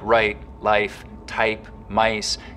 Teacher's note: It also affects the price vowel in the same way, so that the starting point of words like right, life, type, mice can get raised too